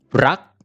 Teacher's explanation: Is considered as a plain consonant, kaya we have dead syllable. At ang ating salita ay gumagamit ng short vowel, kaya we have low class, dead short. Ang tone na gagamitin natin ay high tone.